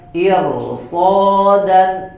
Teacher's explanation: ro-nya dibaca tebal karena setelah ro sukun setelahnya ada huruf isti'la